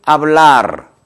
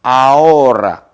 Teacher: 이 아체는 어떤 경우나 묵음입니다. 즉 다시 말해서 발음하지 않는다, 무성음이다 이런 얘기죠.